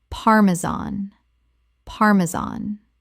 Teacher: The stress is on the first syllable. And the final -an sounds like the word tan.